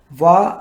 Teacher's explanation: పై దంతాలు కింద పెదవిని తాకినప్పుడు పుడతాయి